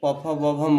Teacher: प वर्ग प फ ब भ म, ये ओठ से होगा